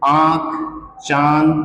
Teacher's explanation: जब सांस की हवा कुछ नाक से निकले, कुछ मुख से · उच्चारण स्थान होता है उनका नाक और मुख के द्वारा। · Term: अनुनासिक